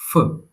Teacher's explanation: It's not the English f. It's a P with a puff of air.